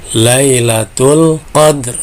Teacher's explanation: ketika dal sukun ini berarti qalqalah sugro ya. Nah, dibacanya dipantulkan